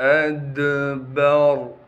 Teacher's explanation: حمزہ کو دال سے ملائیں گے کیونکہ دال ساکن ہے۔ دال پر قلقلہ کیا جائے گا یعنی آواز کو ہلائیں گے۔ با کو بغیر کھینچے پڑھنا ہے۔